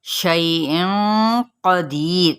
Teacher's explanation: शैइन क़दीर यहाँ पे पुर इख्फा होगा, कौफ है क्योंकि आगे, तो कौफ को पुर पढ़ना है। दी पे या मद्दा और रा बारीक पढ़ी जाएगी, क़दीर।